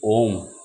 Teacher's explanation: प्लुत स्वर ऐसा स्वर जिसके उच्चारण में दीर्घ स्वर से भी अधिक समय लगता है, जिसके उच्चारण में दीर्घ स्वर से भी अधिक समय लगता है।